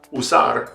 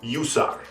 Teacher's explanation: the most common way is just putting like a y sound in front of it the way we do in english sometimes